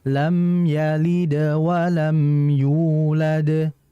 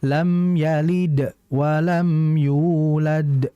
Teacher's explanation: Yalid langsung tidak berhenti seperti sakta. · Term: meringankan pantulannya